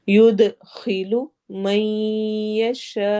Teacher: دال پہ ہم قلقلہ کریں گے، ایکو ساؤنڈ ہوگی